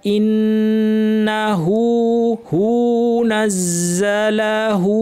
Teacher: দুইটা হায়ের উপর দুইটা উল্টা পেশ লম্বা করে টানতে হবে।